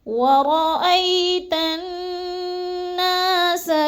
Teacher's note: جب تا کو نون مشدد کے ساتھ ملانا ہے تو ہم نے غنہ کرنا ہے، ادغام مع الغنہ